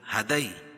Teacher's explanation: ہدئی یا ساکن سے پہلے زبر ہو تو یا لین اس کو نرم آواز کے ساتھ جلدی ادا کریں گے